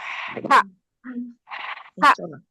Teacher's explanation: Jadi huruf ha itu aliran nafasnya banyak. Harrama jadi kedengar dia.